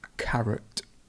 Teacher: the stress moves now to the beginning so it's carrot and the schwa is over the oh